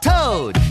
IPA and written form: təʊd (toad)